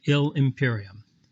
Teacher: ill and imperium are going to be joined to make sound like one word